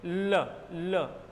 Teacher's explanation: तो जीवा के ल, जीवा के दोनों किनारे ऊपर के दांतों पर चिपक चुके हैं और हवा नीचे से निकल चुकी है और ल का उच्चारण हो रहा है · पार्श्विक व्यंजन हुआ, दोनों जीवा के किनारों से निकलता हुआ प्रतीत होता है